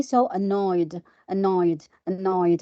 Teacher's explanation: So the ed is pronounced like just da, not id, da, or not ta.